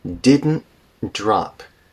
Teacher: So there's a glottal stop after the n in didn't. Didn't, glottal stop.